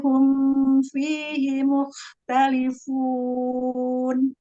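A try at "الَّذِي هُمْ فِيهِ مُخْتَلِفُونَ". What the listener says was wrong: Ya, mim sukun pada sukun idhar berarti idhar syafawi ya. Jangan terlalu panjang ditahan gunanya. Cukup tingkat bainnya aja. Alladzi hum fi.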